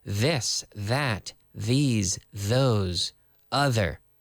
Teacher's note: interdental th sound we can clearly see your tongue as you stick it out